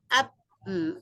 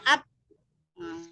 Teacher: dia tertahan suaranya, tidak ada suara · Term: syiddah